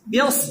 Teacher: যদি বলেন বিশ সিন হয়ে গেছে বিয়স, সদ মোটা হবে